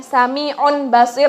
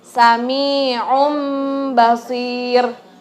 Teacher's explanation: Apabila ada nun mati bertemu dengan ba cara bacanya hurufnya menjadi berubah mim disertai dengan hunnah selama dua ketukan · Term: iqlab